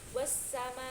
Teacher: Di sini ada hukum bacaan alif lam samsiah ketika alif lam tersebut bertemu dengan huruf shin. Lalu cara membacanya itu langsung dimasukkan atau diidghamkan.